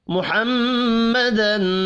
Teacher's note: میم مشدد پر بھی غنہ کرنا ہے، تنوین کے بعد حروف حلقی ہے، یہاں پر اظہار حلقی ہوگا، غنہ نہیں ہوگا۔